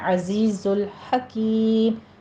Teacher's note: زائی کی آواز میں آپ نے سیٹی لے کر آنی ہے